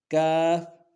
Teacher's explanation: کاف انتہائی باریک ادا کریں گے، کوئی سختی نہیں، کوئی جماؤ نہیں، کوئی موٹا نہیں، بالکل نرمی سے